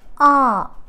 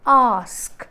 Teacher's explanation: this vowel is a back open unrounded vowel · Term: back vowel